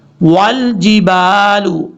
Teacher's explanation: واو کو جب لام سے ملائیں گے تو بیچ میں آپ کو حمزہ نظر آ رہا ہے، اس کو چھوڑ دیں گے